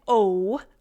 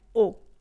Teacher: But in French, you do not glide or change during the sound. They're actually called pure vowels because they do not change at all.